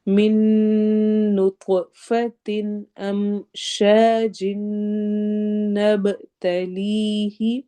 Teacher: نطف پوا پہ قلقلہ ہوگا، ایکو sound ہوگی، آواز تھوڑی ہلے گی۔